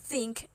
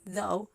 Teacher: Think is voiceless; it doesn't have any vibration in your throat, but though is voiced. It has some vibration in your vocal folds.